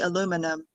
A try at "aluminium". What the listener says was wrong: Aluminium. So stress is on a different syllable. That's all. You stress the second syllable. We stress the third syllable. Aluminium.